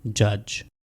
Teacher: ड एंड य ये दोनों वॉइस्ड साउंड्स हैं, तो ये दोनों मिलके वॉइस कंसोनेंट बनाएंगे ज